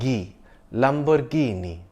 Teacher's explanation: note that the stress is on the second last syllable